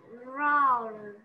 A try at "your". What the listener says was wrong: Không phải. Con đang cong lưỡi ở đầu đấy. Cô có đọc là raw không? Cô đọc là your.